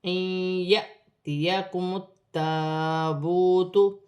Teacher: الف پر جزم کی حرکت ہے، الف کو حمزہ بھی پڑھا جائے گا اور جھٹکے کا ساتھ پڑھا جائے گا. جیسے یأتیکم التابوت، تا مشدد ہے، میم کی حرکت کے ساتھ ملا کر پڑھا جائے گا.